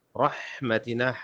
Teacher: رحمتنا حا پہ حلق پہ زور دیں